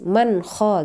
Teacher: Nun mati bertemu dengan K salah satu huruf Izhar maka dibaca jelas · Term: izhar Haqi